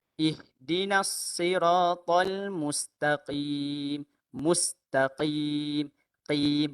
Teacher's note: Sepatutnya qaf tu tebal sikit dan juga dia berada pada makhraj pangkal lidah dalam. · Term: huruf qaf